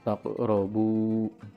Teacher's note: qalqalah sugro karena ada huruf qaf berharkat sukun di tengah kata atau kalimat